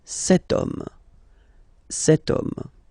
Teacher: as in French, H is not pronounced, so the first sound that we hear is O, okay, and then it will follow the same rule.